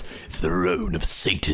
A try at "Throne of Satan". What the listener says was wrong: No, you have to roll your tongue like this. Throne.